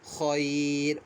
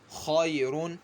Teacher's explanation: خیر، تو ہم جو ہے را کو باریک پڑھیں گے، کیونکہ را ساکن ہو جائے گا اور اس سے پہلے یا ساکن ہے، تو را کو پھر باریک پڑھا جائے گا ۔ خیرون، اس وقت ہم را کو پر پڑھیں گے، آگے